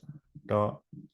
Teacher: there's da where you put the tongue up into the middle of the alveolar ridge